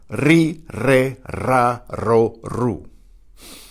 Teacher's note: The initial R is also trilled.